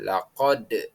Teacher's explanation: Kita membaca tulisan aslinya lakot. Namun, membaca yang benar adalah dengan kolkolah, yakni memantul. Jadi, bacaannya menjadi lakod.